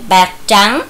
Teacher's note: Ở tiếng trắng có âm tr, khi đọc tiếng trắng thì các con cần cong lưỡi lên.